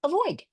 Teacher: Flex the first vowel to a schwa